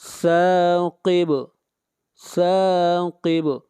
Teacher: سا کو کھینچ کر پڑھیں گے 1 الف کے برابر، مد اصلی ہے، ثاقب ثاقب، النجم الثاقب۔